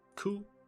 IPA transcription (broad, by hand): ku